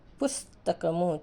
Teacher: స్ అనేది మనం ఊది పలుకుతున్నాం శేష సహ మనకి ఊష్మాలు ఊది పలుకుతాం అయితే వేరు వేరు హల్లులు కలిసిన